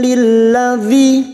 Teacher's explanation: Lil masuk pada huruf lam berikutnya. Lilladzi kasrah bertemu ya sukun 2 harokat.